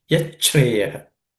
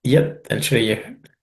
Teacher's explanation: When we look at the second line, yachreyaha is made up of two words, which are yat and shreyaha. The sha, which is actually a palatal sha, becomes cha when it joins sandhi, and the tha becomes ich.